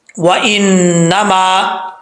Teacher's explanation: واؤ کو پڑھتے وقت ہونٹ گول کریں گے ، نون کے اوپر شد ہے، ایک الف کی مقدار غنہ